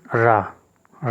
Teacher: रा को हम लुंठित व्यंजन कहते हैं